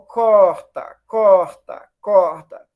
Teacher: é uma fricativa velar surda